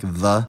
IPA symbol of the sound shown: ð